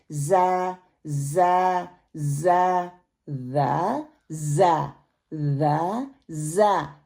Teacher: ज़ा इसमें ऐसे जैसे विसल की सीटी की आवाज़ आती है वैसे आएगी। ज़बान की नोक को सामने के नीचे वाले दो दांतों के किनारों से मजबूती से लगाने से होगा।